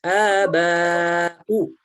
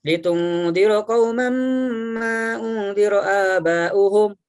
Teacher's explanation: Aba panjangnya boleh 4, boleh 5, boleh 6, tidak boleh 2.